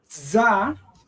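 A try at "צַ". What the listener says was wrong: Not za, tsa. Start with the T, tsa.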